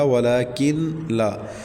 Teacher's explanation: وَلَكِنْ لَا، یہ اصل میں تھا وَلَكِنْ لَا، نون ساکن کے بعد حروف یرملون میں سے لام آ گیا تو یہاں ادغام ہوگا، ادغام بلا غنہ، مطلب بغیر غنہ کے ادغام کریں گے۔ وَلَكِنْ لَا، لام کے بعد الف مدہ ہے، ایک الف تک کھینچیں گے۔